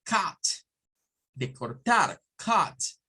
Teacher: el sonido de una A con una U, entre A y U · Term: sonido AU